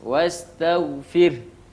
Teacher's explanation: ada ro sukun didahului oleh harakat kasrah, itu ro-nya dibaca dengan tipis